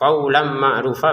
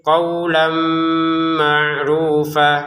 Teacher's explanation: Qawlan ma'rufa, tulisannya qawlan, tapi karena di depannya ada mim, kita masukin tanwinnya ke mim dengan dengungan. Qawlan ma'rufa, dengungannya 2 harokat, jangan sampai kurang ya.